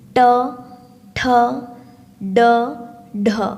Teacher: କହିବା ସମୟରେ ଆପଣଙ୍କର ଜିହ୍ୱାଟା ତାଳୁ ଆଡ଼କୁ ଟିକେ ମୋଡ଼ିଯାଏ ଏବଂ ଆପଣଙ୍କ ପାଟିରୁ ଯେଉଁ ସାଉଣ୍ଡ, ଯେଉଁ ସ୍ୱର ବାହାରେ ସେ ହେଉଛି ମୂର୍ଧନ୍ୟ ସ୍ପର୍ଶ ବ୍ୟଞ୍ଜନ ଧ୍ୱନି।